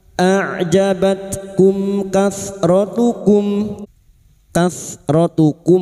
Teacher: mim sukun bertemu kaf idhar safawi, mim sukun dibaca jelas tanpa mendengung. Bertemunya mim sukun dengan huruf hijaiyah selain mim dan ba, maka mim sukun dibaca jelas tanpa mendengung.